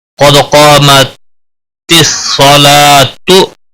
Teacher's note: मिलाने की सूरत में गोल ताह भी पढ़ी जाएगी, उसका पेश भी पढ़ा जाएगा